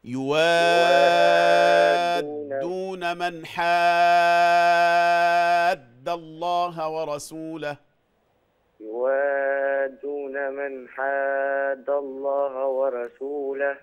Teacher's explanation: اشبع المد شوية ، اشبع المد يعني ادي له حقه يا حبيبي، ده مد لازم كلمي مثقل